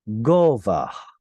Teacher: This is a consonantal guttural H sound at the end, which would have originally been pronounced gova, with sort of a breathy H there at the end.